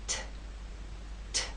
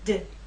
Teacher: There is more air released. There's a puff, a strong puff with the T. That strong puff is not present with the D.